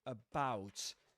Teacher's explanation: Notice that at the beginning, the first syllable is a schwa actually